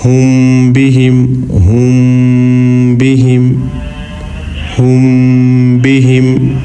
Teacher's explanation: اخفا کہتے ہیں ناک میں آواز کو چھپا کر پڑھنے کو, یعنی میم کی آواز کو ناک میں تھوڑی دیر چھپا کر پڑھیں گے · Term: اخفا شفوی